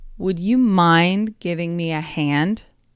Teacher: Mind and hand receive the most emphasis. So when you say this, you don't have to make it super emphasized, like, would you mind giving me a hand? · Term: stress pattern